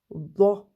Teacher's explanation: c'est le milieu de la langue qui gonfle et qu'on le sent se coller au palais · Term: Dad